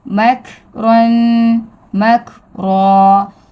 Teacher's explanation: را کے اوپر زبر، را کو ہم ہیوی پڑھیں گے